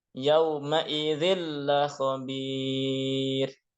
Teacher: yauma idzin tanwin ketemu lam menjadi idgham bila gunnah, ya masuk tanpa dengung. Jadi bunyi kasrah tain yauma idzin hilang.